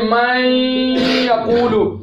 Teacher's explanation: دیکھیں جیسے میں یقول، نون ساکن ہے، اب من الگ کلمہ ہے، یقول الگ کلمہ ہے، نون آخر میں ہے، بعد میں یا آ گئی، نون کو یا کیا، یا کا یا میں ادغام کر دیا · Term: ادغام با غنہ